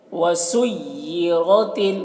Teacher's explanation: را کو موٹا کر کے پڑھتے ہیں اور اس تا کو باریک پڑھیں گے